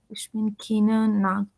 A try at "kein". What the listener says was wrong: try to speak slowly and use the correct word, not keen. There is nothing called as keen in German. It's kein.